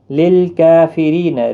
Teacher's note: اس کے اوپر کھڑی زبر بھی ہے، 1 الف کی مقدار کے برابر کھینچ کر بھی پڑھیں گے. للکافرین ری یا مدہ ہے، 1 الف کی مقدار کے برابر کھینچیں گے